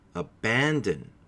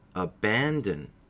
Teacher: abandon has three syllables the first syllable is unstressed the second is stressed in the third is unstressed